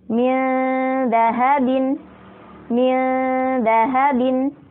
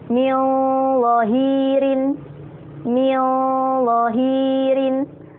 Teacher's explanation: Kemudian ketika bertemu dengan huruf lo, min lohirin, min lohirin, lidahnya keluar, tapi kemudian kita beri sifat isti'la di situ. Kita beri sifat tebal.